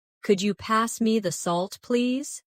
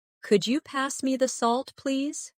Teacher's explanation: Listen to the way my voice rises on, Could you? and falls gently at the end. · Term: intonation